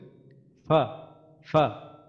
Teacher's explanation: নিচের ঠোঁটের পেট উপরের দাঁতের আগার সাথে লাগাই উচ্চারিত হচ্ছে ফা । তো পেটটা কোনটা, আমাদের ঠোঁটের মধ্যে যে ভিজা অংশটা আছে